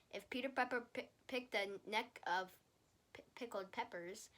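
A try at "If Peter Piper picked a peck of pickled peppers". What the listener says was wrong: You're saying neck instead of peck.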